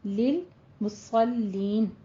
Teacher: صاد کو پر پڑھنا ہے، لام کو باریک ہی رکھنا ہے